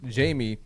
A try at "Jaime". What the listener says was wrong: Jaime. Jaime. It's Jaime Munguia. No, it's Jaime. J is silent.